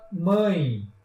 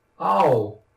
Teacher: O nasal, pessoal, é aquele que o ar ele se divide tanto pela boca quanto pelo nariz na hora da fala. Vocês percebem, se vocês na hora que estiverem falando colocar os dedos no nariz, vocês percebem que o nariz vai tremer durante a palavra, a pronúncia da palavra. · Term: ditongo nasal